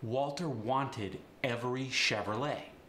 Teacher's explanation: the W and the V get the B sound but it's got a hint of a v in there